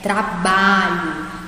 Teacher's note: o ba é mais forte e penúltima sílaba, portanto, paroxítona, a palavra trabalho.